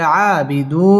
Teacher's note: আবিদু মধ্যে তাবাই এক আলিফ টানে পড়তে হবে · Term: খারা জবর